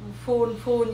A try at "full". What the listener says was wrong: Có chữ L cuối full.